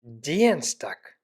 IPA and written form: ˈdiːənstak (Dienstag)